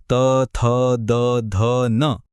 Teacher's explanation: की लागतात दात आणि पुढचा गट आहे दंत्य नावावरूनच कळलं असेल हे ध्वनी उच्चारताना जीभ थेट दातांच्या मागे टेकते